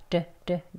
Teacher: t 소리 내지 않고 부드러운 d 발음으로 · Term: flap t